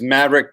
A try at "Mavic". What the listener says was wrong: so Mavic, first, let me correct you. It's Mavic. Okay, that would have a little bit more credibility than Maverick because there's no R in there.